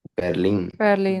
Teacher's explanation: Berlín, oui, la nasalisation à la fin.